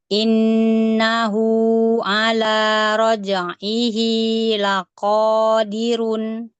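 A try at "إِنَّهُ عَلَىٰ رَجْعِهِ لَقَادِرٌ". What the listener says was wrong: Ahsan.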